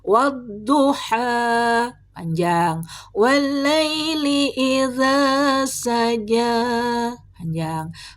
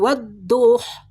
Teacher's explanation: Mad thabi'i di ujung ayat dibaca utuh tidak boleh disukunkan kecuali pada hak damir.